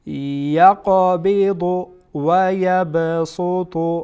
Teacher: اینجا قاف از حروف قلقله هست و وسط حرف قرار گرفته، قلقله سقرا میشه. یقبض و یبسط و یب بیم با هم از حروف قلقله هست، از حروف قطب و جده.